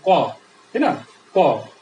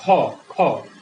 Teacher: ক বললে বাতাস কম বের হয়, এই জন্য এটাকে আমরা বলবো অল্প প্রাণ ধ্বনি · খ বললে বাতাস বেশি বের হয়, এই জন্য আমরা এটাকে কি বলবো? এটাকে বলবো আমরা মহাপ্রাণ ধ্বনি